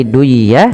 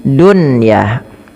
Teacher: pada satu kata tidak diidgamkan tapi dibaca dengan jelas suara nunnya dan ini dikenal dengan istilah izhar mutlak.